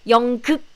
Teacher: we don't have the strong k sound. You don't breathe out the k sound at the end.